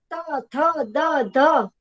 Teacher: આપણું આ જીભ છે ઈ આગળના જે દાંત છે ને એના પેઢામાં આગળ ત્યાં ખૂણામાં અડે છે, એટલે આને દંત્ય ધ્વનિ કહેવાય છે, કે દંત્ય વ્યંજન કહેવાય.